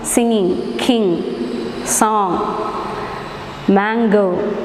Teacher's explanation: soft pallet is lowered so air escapes through the nasal passage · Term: nasal sounds